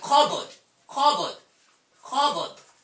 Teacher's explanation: This p is silent, pa sound is silent.